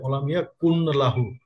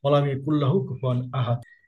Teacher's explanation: এখানে খেয়াল করেন যাদের তাসবিতের জ্ঞান নাই তারা হয়তো এটা এইভাবে করতে পারেন যে ওয়ালাম ইয়াকুন লাহু, কিন্তু কুন লাহু হবে না, কুল্লাহ হবে। নুন শব্দটা এখানে উজ্জ থেকে যাবে।